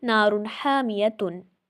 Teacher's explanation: نون کی آواز کو کیا کر کے پڑھیں گے؟ ظاہر کر کے پڑھیں گے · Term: اظہار